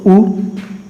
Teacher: ये वो स्वर हैं जिनको बोलते समय हमारे जो ओष्ठ की जो स्थिति है वो वृत्ताकार हो जाती है